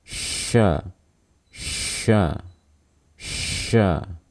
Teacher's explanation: saat kita melafangan huruf syin harus terdengar ada suara nafas ya ada aliran nafas yang terdengar · Lidah yang terangkat merupakan bagian tengah lidah yang kita gunakan. Perhatikan dengan baik bahwasanya lidah tidak menempel ke langit-langit, hanya mendekat. Nah, kita dekatkan lidah ke arah langit-langit mulut yang sejajar. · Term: hams, huruf shin